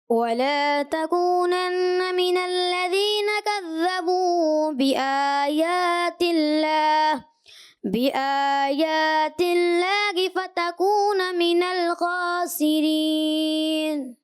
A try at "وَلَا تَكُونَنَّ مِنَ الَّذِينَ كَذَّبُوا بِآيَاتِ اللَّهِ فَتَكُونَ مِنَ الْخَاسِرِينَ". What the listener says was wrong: تھوڑا غنہ کمزور ہوا مگر آپ اسپیڈ میں تھے تو اچھا انداز تھا. آخر میں آپ نے جو ہے من الخاسرین, یہ جو ہے نا آپ نے تھوڑا پر کرنا تھا, آپ نے صحیح پر نہیں کیا.